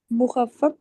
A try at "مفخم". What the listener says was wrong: ہاں مفخم. فا پہلے, ٹھیک ہے. تفخیم فا پہلے, فا بعد میں. مفخم.